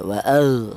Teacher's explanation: huruf ini jelas-jelas keluar dari tenggorokan bagian atas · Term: idhar halki